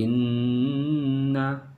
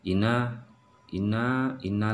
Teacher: suara ditekan ditahan dua harakat dan berdengung